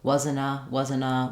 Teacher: I might drop the T entirely because NT tends to drop in linked cases, just like we would in the word internet or interview.